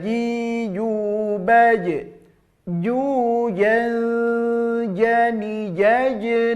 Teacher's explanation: keluar murni dari tengah-tengah lidah ya tempelkan ke tengah-tengah langit-langit atas maka ini pengaruh lidah bukan pengaruh syafatain ingat kesalahan biasa dari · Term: huruf Jim